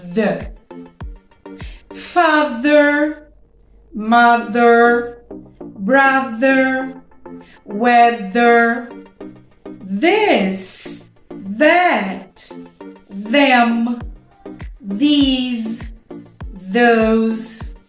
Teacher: in the middle of the word now i'm gonna give you examples where the th has the sound with vibration